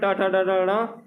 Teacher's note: ट वर्ग जिसमें ट ट ड ड ड जिसे मूर्धन्य से बोला जाता है